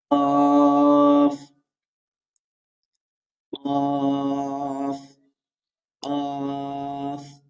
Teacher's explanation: ৪ নম্বর মাখরাজে আমরা শিখেছিলাম জিহ্বার গোড়া তার বরাবর উপরে তালুর সঙ্গে লাগিয়ে কফ উচ্চারিত হয়।